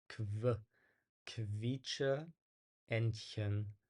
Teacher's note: it sounds like there's a W sound after